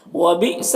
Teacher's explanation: حمزہ ساکنہ ہے، جھٹکا لگے گا